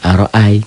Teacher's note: Ini fathah dengan ya mati. Ini jadi huruf lin. Tidak jadi matobi'i, tidak jadi panjang. Kayak a dan i jadi diptong ai.